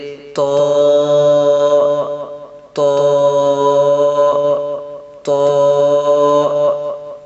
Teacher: زبان کی نوک جب اوپر یعنی سامنے والے دونوں دانتوں کی جڑ سے لگے تو اس سے طا ادا ہوتا ہے